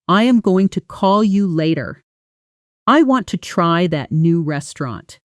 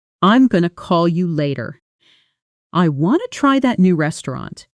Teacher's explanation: Connected speech again, this time with going to, which almost always becomes gonna in relaxed natural speech, and want to, which becomes wanna